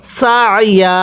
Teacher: একটি ওয়াকফের নিয়ম স্মরণ রাখবেন, যদি দুই জবরের পরে এরকম খালি আলিফ থাকে তাহলে ওয়াকফের সময় এই দুই জবরের মধ্য থেকে একটি জবরকে বাদ দিয়ে আরেকটি জবরে এক আলিফ টেনে পড়তে হবে।